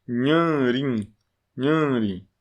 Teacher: porque o n nasaliza a da frente